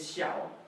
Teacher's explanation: It's the third tone, the one that goes down and up.